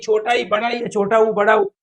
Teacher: जिसमें मुख कम खुलता हो वो क्या कहलाते हैं? संवर्त कहलाते हैं